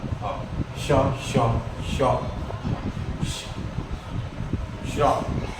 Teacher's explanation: श की ध्वनि जीभ से रगड़ खा रही है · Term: ऊष्म या संघर्षी व्यंजन